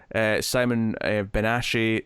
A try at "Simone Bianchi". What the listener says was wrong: Simone Bianchi. It's not that. You said Simon Bianchi. Simone Bianchi.